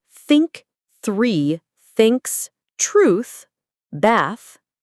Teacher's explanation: For the unvoiced th like in think, the sound comes from air, not your voice box.